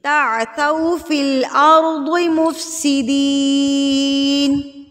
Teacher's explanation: تا کے اوپر زبر ہے اور زبر کے بعد کیا ہے؟ واو ہے، اس کو ہم کھینچیں گے نہیں، صرف پیش کی صورت میں کھینچیں گے۔